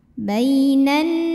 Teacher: karena ada Alif sebelumnya baris fathah maka huruf nun dipanjangkan dua harakat